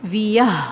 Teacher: آخر میں ہا آ رہی ہے ساکن تو اس پہ آواز کو لمبا چلائیں گے